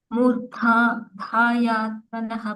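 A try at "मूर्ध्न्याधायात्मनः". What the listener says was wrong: ಮೂರ್ಧ್ಯಾ Mataji ದ ಕೆ ನ ಒತ್ತಿದೆ ಅಲ್ಲಿ ನೋಡಿ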